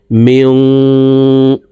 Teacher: পরে ইকফার 15টি হরফের ভিতরে একটি হরফ সিন আসছে, এই কারণে এই নুন সাকিনকে নাকের ভিতরে লুকাইয়া গুন্নার সহিত পড়ব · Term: ইকফা গুন্না